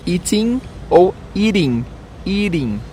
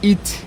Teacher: O T em inglês, quando ele vem entre vogais, ele às vezes ele é pronunciado como o nosso R de seringa.